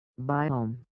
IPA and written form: ˈbaɪoʊm (biome)